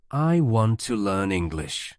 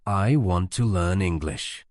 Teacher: The stressed words are want, learn, and English.